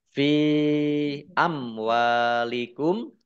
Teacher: Mad Jaiz munfasil dibaca panjang boleh lima boleh dua harakat · mim sukun bertemu dengan huruf wau bacaan izhar syafawi dibaca jelas